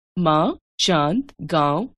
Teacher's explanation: ध्वनि वास्तव में स्वरों का गुण है। इनके उच्चारण में वायु मुंह और नाक दोनों मार्गों से बाहर निकलती है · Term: अनुनासिक